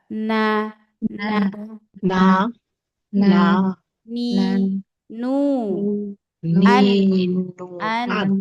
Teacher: posisinya dia sedikit belakang dari makhraj lam itu huruf nun